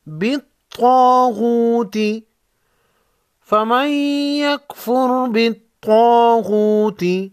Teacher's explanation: طا اور غین کو موٹا پڑھیں گے